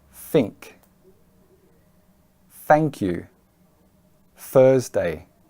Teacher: Hong Kong people normally mispronounce this as an F sound